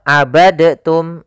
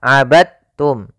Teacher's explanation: termasuk huruf Qalqalah karena dia memiliki makhraj yang sama dengan Ta Maka diidghamkan dalnya kepada huruf ta